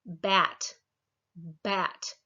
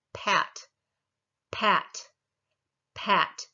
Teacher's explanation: You feel the vocal cords vibrating when the vowel starts, not when you're doing the p.